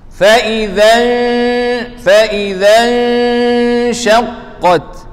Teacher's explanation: nun mati bertemu dengan syin, ikhfa haqiqi. Ada guna dua harakat dan guna nipis. Fa idzan guna tebal salah.